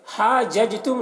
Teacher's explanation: जीम में कलकला होगा, जीम हुरूफ कलकला में से है और जीम के ऊपर जज़्म है